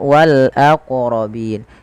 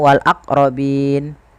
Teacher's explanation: Qalqalah yaitu bacaan memantul, sehingga dalam melafalkan wal aqrabin ini wajib memantulkan